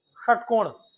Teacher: जीभ जा रही है मूर्धा तक और फिर उसके बाद वापस आ जा रही है। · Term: मुरधन्य सा